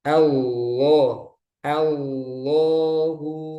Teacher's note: a-nya tipis untuk a-nya tapi lamnya tebal